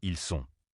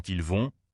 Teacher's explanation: on prononce le L dans ils sont. Mais dans ils vont, on ne le prononce pas.